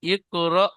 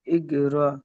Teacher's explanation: সাকিন যুক্ত হামজাকে একটু ঝাটকা বা ধাক্কা দিয়ে অল্প ঝাটকা বা ধাক্কা দিয়ে পড়তে হয়।